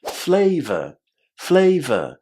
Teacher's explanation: And then the O r at the end here is pronounced in a very short way just as v the flavor flavor. Again, as you can hear, I'm not pronouncing the final R a as this is characteristic of the British accent. · I'm not pronouncing the final R, as this is characteristic of the British accent